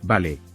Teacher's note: si lo dices con una sonrisa y un tono ascendente, vale, puede sonar alegre y amistoso. Lo usan cuando aceptan una idea o hacen planes con entusiasmo.